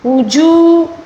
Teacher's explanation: واو مدہ ہے، اس کو ایک الف کے برابر کھینچ کر پڑھیں گے